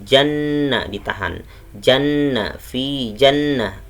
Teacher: hukumnya adalah nun gunnah atau gunnah. Jadi bacanya janna ditahan